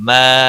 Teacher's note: الف مدہ ہے، 1 الف کے برابر کھینچ کر پڑھیں گے